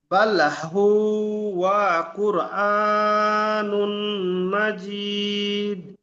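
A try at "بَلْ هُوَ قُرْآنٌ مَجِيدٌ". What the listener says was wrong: কুরআনুম। এখানে তানবিন মিমের সাথে যুক্ত করতে হবে। নুম, গণনা করতে হবে। জি, বাল হুয়া কুরআনুম মাজিদ।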